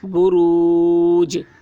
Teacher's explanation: جیم حروف قلقلہ میں سے ہے اور اس پر جزم ہے، اس لیے جیم میں قلقلہ ہوگا